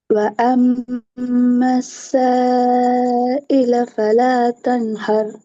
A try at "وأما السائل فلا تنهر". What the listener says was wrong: இன்னும் கொஞ்சம் நீட்டி ராகம் தருவோம், நீட்டி ராகம் தருவோம். وأما السائل فلا تنهر. நீட்டி ராகம் தருவோம்.